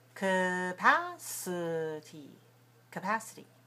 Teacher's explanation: The first and the third syllables are weak.